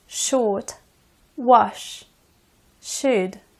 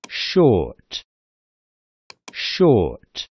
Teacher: кончик языка и средняя часть языка одновременно поднимается к небу образуется небольшой проход для воздуха